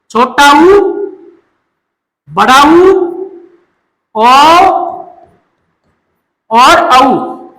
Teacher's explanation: इनका उच्चारण करते समय होठ क्या हो जाते हैं? गोल। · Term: वृत्ताकार स्वर